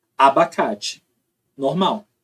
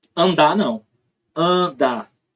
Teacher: o A está assimilando o traço nasal do fonema que vem na frente.